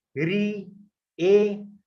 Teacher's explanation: जीभ का सामने वाला भाग प्रभावित हो रहा है।